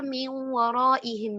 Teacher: उसमें नून साकिन जो है वो मुकम्मल तौर पर मर्ज नहीं हो रहा होता, बल्कि नून साकिन का कोई ना कोई असर, कोई ना कोई आवाज, कोई ना कोई उसकी सिफ्त गुन्ना बाकी रहती है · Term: इदगाम नाकिस